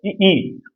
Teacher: जीभ तालु से छू नहीं रही, लेकिन हवा जो है वो जीभ और तालु के बीच में से ध्वनि बना रही है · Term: तालव्य